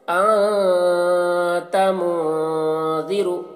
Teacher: میں سے تا ہے، تو یہاں پر نون میں اخفا ہوگا، تو نون کی آواز کو ناک میں چھپا کر پڑھیں گے، اور ایک الف کی مقدار تک چھپائیں گے